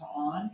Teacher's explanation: my one tell of being from New Orleans is I can't say the word on without diphthonging it into on